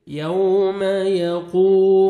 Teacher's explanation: قوف کو موٹا کر کے پڑھنا ہے اور 1 سیکنڈ کھینچنا ہے کیونکہ واو جزم سے پہلے پیش ہے، واو مد ہے۔